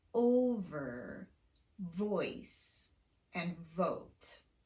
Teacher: You have to pronounce the V with unrounded lips despite that rounded vowel that's right next to it.